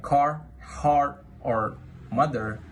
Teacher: words like car, heart, or mother, the R is strongly heard at the end · In American English, the R sound is clearly pronounced in all positions, at the beginning, in the middle, and especially at the end of the words. That is why American English is known as a rhotic accent.